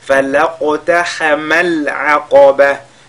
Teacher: Falaqtahama al-aqaba. Falaq, la lettre qaf est lue avec al-qalqala